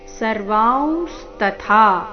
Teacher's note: ಸರ್ವಾಂಶ ತಥಾ ಥ ಮಹಾಪ್ರಾಣ ದೀರ್ಘ · ಪಶ್ಯಾಮಿ ದೇವಾಂಸ್ತವ ದೇವ ದೇಹೆ ಸರ್ವಾಂಸ ತಥಾ ಭೂತ ವಿಶೇಷ ಸಂಘಾನ್ ಸರ್ವಾಂಶ ತಥಾ ಈ ಶಬ್ದದಲ್ಲಿ ಸಹ ಅನುಸ್ವಾರದ ಉಚ್ಚಾರಣೆ ನಾಸಿಕ ರೀತಿ